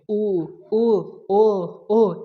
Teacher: जिसको उच्चारण करते समय हमारा जो ओठ होता है वो गोलाकार खुलता है उसको हम लोग क्या बोलते हैं, तो वृत्तमुखी बोलते हैं। · इसको उच्चारण कर रहे हैं तो हमारा ओठ क्या है, ओठ हमारा गोलाकार खुल रहा है। तो जब हमारा ओठ गोलाकार खुलेगा तो इसको हम लोग क्या बोलेंगे, वृत्तमुखी बोलेंगे।